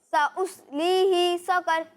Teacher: अच्छा देखें, आपने यहाँ इस बात का ख्याल रखना है कि ये ही को खींचेंगे नहीं। ठीक है, यहाँ हा के नीचे ज़ेर है, इसे खींचना नहीं है। और दूसरी बात ये कि यहाँ कॉफ को पुर पढ़ना है, कॉफ हुरूफ मुस्तारिया में से, इसे भी पुर पढ़ेंगे और रा को भी पुर पढ़ेंगे, बारीक नहीं पढ़ेंगे।